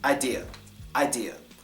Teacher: That gets the schwa on the last A, idea.